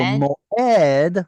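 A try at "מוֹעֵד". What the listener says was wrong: moed doesn't have the stress on the O, does it? Otherwise, it would be moed. It has a tzere, which is not artificial. It's not an artificial segol.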